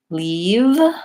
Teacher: leave is a tense vowel. My tongue is tight. My lips are engaged. I'm smiling.